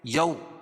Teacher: واو ساکن سے پہلے زبر ہو تو واولین ہوتا ہے، اس کو نرم آواز کے ساتھ جلدی ادا کریں گے